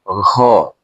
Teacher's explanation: दोनों एक साथ उच्चारण कीजिए तो एक ग और उसमें ह की ध्वनि जोड़ दीजिएगा तो हो जाएगा घ